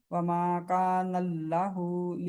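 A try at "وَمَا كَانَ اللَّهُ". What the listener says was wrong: नहीं है, इसको खींचना भी है ना, खड़ी जबर है तो। नल्लाहु। हम अल्लाह नहीं कहते, हम अल्लाह कहते हैं।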